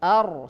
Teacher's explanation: Ra, jadi bergetar 1 kali. Jangan sampai berkali-kali.